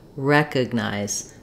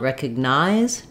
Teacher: in recognize, we stress on the first syllable, we have the clear eh vowel, and that's the syllable that's going to be longer